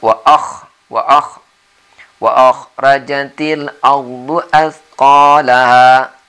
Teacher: Kha di sini kha kerongkongan. Jadi membacanya wa akhrajatil ardu athqalaha.